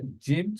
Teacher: জুইলা আরেকটু সুন্দর করে জিম আমরা প্রোনাউন্স করি জিম যখন আমরা প্রোনাউন্স করব তখন জিবার মাঝখানটা তালুর সাথে লাগবে